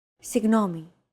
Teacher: this character isn't pronounced using an English G sound at all it's like a very soft continuous and loosely held G almost as if you're gargling but don't make it sound too throy there's no such sound